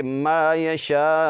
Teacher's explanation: الف مد زبر شا، ما یشا، حمزہ پیش او، ما یشاء، یہاں پر مد متصل ہے، اس کو ہم 4 سے 5 الف کی مقدار تک کھینچ کر پڑھیں گے